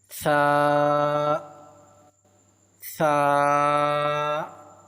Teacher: ثا کو پڑھنے کا درست طریقہ یہ ہے اپنی دونوں دانتوں کے درمیان میں اپنی زبان کی نوک کو تھوڑا سا باہر نکال کر پڑھیں گے تو ثا ادا ہوگا